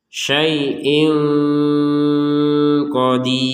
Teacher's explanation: menurut yang barusan Katanya tidak 100% dengungnya karena memang ini ya tanwin bertemu dengan Q kita baca dengan samar samar itu artinya masih ada unsur dengungannya